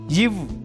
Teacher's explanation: மேல்வாய் பல்லை கீழ் உதடு பொருந்துவதால் பிறக்கிறது